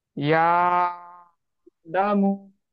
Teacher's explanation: आ को खींचे, मध्य हुक्मी है यहाँ पे।